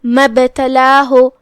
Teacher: مبتلاہ جو کہ با پہ جزم ہے تو یہاں با کا حکم ہے قلقلہ. قلقلہ کا معنی ہے حرف کو ہلانا، تو ہم با کو ہلاتے ہوئے یہ کلمہ کو ادا کریں گے